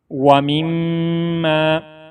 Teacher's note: وَيُقِيمُونَ الصَّلَاةَ وَمِمَّا، یہ میم کے اوپر شد ہے، پہلے والے میم کو دوسرے میم کے ساتھ اس انداز میں ملائیں گے تاکہ شد کی ادائیگی ہو سکے، اور اس کے اوپر غنہ بھی کریں گے، کیونکہ جس میم کے اوپر یا نون کے اوپر شد ہوگا تو اس کے ساتھ اس کے اوپر غنہ کریں گے۔